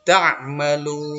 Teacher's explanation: Jadi ada waw mati, kemudian ada nun. Karena kita wakaf di situ atau berhenti, maka nunnya juga dimatikan. Panjangnya boleh sampai 6 harakat, ya. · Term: mad arid lis sukun